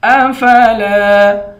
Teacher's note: لام کے بعد الف ہے، الف حروف مدہ ہے، اس کو ایک الف کے مقدار کھینچ کر پڑھیں گے